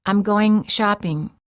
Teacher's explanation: The mistake of saying going shopping is that the tip of the tongue is touching the area right behind the upper front teeth for the N sound. And when you say going shopping, the mistake is that G is released too much.